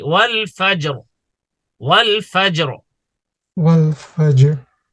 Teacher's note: The ra of fajr is gonna be heavy.